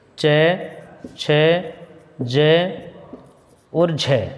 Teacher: ये 4 वर्ण स्पर्श संघर्षी हैं, यानी इनके उच्चारण में जीवा उच्चारण स्थानों को स्पर्श तो करती है, लेकिन स्पर्श करने के बाद वायु घर्षण करती है। स्पर्श करने के साथ साथ वायु बाहर निकलने में घर्षण करती है, संघर्ष करती है